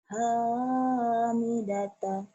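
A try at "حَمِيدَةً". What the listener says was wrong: Ha gede. Hamidata.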